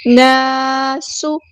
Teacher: الف مد آیا ہے، خالی الف سے پہلے زبر ہے، تو ہم یہاں پر ایک الف کے برابر لمبا بھی کریں گے، 2 حرکات 2 کاؤنٹس لمبا بھی کریں گے۔